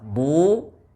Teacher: ditebalkan dan dipanjangkan dua harakat karena ada wau sukun · huruf dad dammah dibaca dengan tebal karena bersifat istilla dan itbaq duu yaitu dengan cara menempelkan dan menekan bagian tepi lidah pada